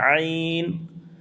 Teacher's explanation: ऐन को दरमियान हल्क से अदा करते हैं। · عین کو درمیان حلق سے ادا کرتے ہیں، عین۔ اس کے بعد واو مدہ ہے، واو مدہ کو ایک الف کے برابر کھینچتے ہیں۔